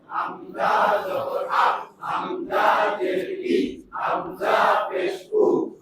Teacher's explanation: হামজা হলকের শুরু হতে শক্তভাবে আদায় হয়।